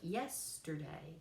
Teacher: three syllables, stress on the first one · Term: dactylic